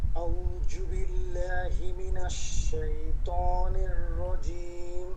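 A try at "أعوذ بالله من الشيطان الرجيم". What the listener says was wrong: আউযু, জাল, জাল মনে আছে জাল কোথায়? জিহ্বার আগা, সামনের উপর দুই দাঁতের আগা। আউযু, আউযু বলছেন, জু হবে না, কি হবে? আউযু। জালটা ঠিক করতে হবে।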